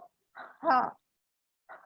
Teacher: حلق سے سانس نکالتے ہوئے ادا کیا جاتا ہے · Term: حروف حلقی